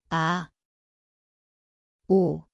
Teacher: See kõlab nagu vaikne ing. Koht on kurk, vaikne algus.